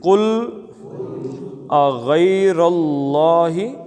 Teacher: غین موٹا، را موٹا، اللہ کا لام موٹا